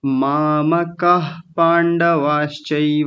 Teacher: आपने यहाँ विसर्ग नहीं बोला था। मामकाः पांडवाश्चैव, तो विसर्ग बोलना था